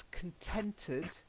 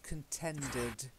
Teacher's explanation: T lots of air coming from your teeth and D not so much air DT D is a little bit further back on the palate